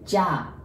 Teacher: you prolong the word. So you pronounce it as if there is H at the end. Ja. And that's without the bar.